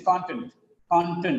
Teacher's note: Because of the stress on the first syllable, the next syllable becomes weak.